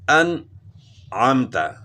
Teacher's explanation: بیچ میں آواز تھوڑی جو رک گئی ہے، آواز جو تھوڑی دیر کے لیے ختم ہو گئی ہے، اس کو سکتہ کہتے ہیں۔